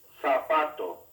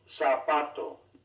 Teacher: In Spain, the letter Z is pronounced with a TH sound. Elsewhere, it is S. Compare the two ways to say the word for shoe.